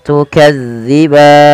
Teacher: hati-hati jangan sampai terbaca dengan tukazziban dengan huruf zai tapi dia dza ya